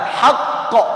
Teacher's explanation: Kalau berhenti ada qalqalah akbar.